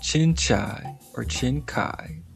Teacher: Pronounced like the English word chin and chai pronounced like chai or [music] kai with the stress on the second syllable